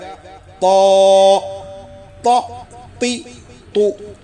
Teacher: Number 8 طا۔ زبان کی نوک اوپر کے 2 بڑے دانتوں کی جڑ میں لگا کر آواز کو موٹا کر کے پڑھیں گے